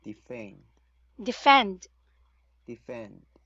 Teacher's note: So for the first syllable, this is actually a silent E. So, but the second syllable, which is fend, should be in a short E, which is e.